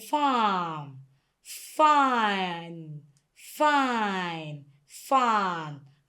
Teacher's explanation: we make use of these two organs, the teeth, the upper part and the lip, the lower part. So they both come together to produce a sound like this. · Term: F sound